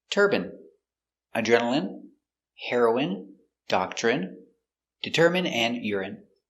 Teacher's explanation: So all of these words are pronounced with the in sound for the ine.